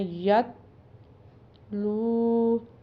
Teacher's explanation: لو کو اپنے ایک الف کے برابر لمبا کر کے یا کھینچ کے پڑھنا ہے کیونکہ پیش ہے اور آگے واو ساکن آ رہی ہے۔